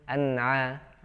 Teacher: An'amta ya, atau memantul an'amta ya, jangan sampai seperti baca bunyi-bunyi yang tadi ya. Tapi dibacanya dengan ya tetap menempelkan ujung lidah ke langit-langit di atasnya. Nah, ketika keluar huruf setelahnya baru dilepas secara otomatis ya. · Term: nunnya sukun